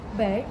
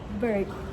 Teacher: British uses a long mid center vowel. Meanwhile, American uses a rotic size mid central bowel.